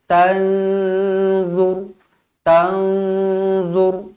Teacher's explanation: Nun kosong bertemu dengan d ikhfa Hakiki dengung dua harakat